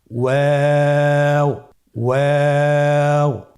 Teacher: 2 ঠোঁট গোল করে মাঝখানে ফাঁক রেখে হরফটি উচ্চারণ করতে হবে। · ওয়াও হরফটি উচ্চারণের ক্ষেত্রে বারিক হবে এবং 3 আলিফ টেনে পড়তে হবে।